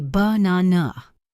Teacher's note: The middle syllable is stressed